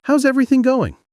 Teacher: When you ask this, your tone should rise slightly at the end. It's what makes it sound like a real question.